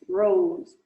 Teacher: iniciais por exemplo britânico contra os americanos são né o o som do R retroflexo